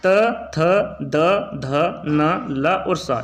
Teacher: वे व्यंजन जो जीभ की नोक द्वारा ऊपर के दांतों को स्पर्श करने पर उच्चारित होते हैं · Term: दंतेय व्यंजन